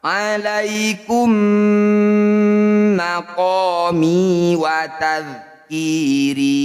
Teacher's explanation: Mim sukun bertemu mim disebut bacaan idgham mimi atau idgham mitsli. Cara bacanya bunyi mim yang pertama masukkan pada mim yang kedua, kemudian didengungkan atau ditahan 2 harokat.